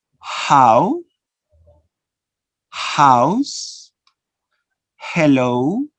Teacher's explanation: This is called a glottal, no? Glottal, fricative, voiceless sound.